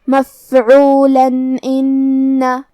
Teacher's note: ہم یہاں تنوین ظاہر کریں گے اور اسے نون ساکن پڑھیں گے اور بغیر غنہ سے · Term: اظہار